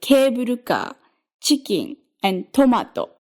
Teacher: If that highest syllable is the first syllable, you get words like cable car, chicken, and tomato. Starting high for that first syllable, and then, after the down arrow in the IPA, stay low. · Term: downstep